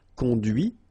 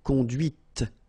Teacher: final T is not pronounced, conduit, here, and then the feminine, conduite